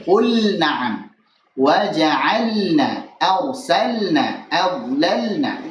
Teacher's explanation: Lam sukun pada fi'il ketemu nun ini harus lebih dijelaskan. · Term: izhar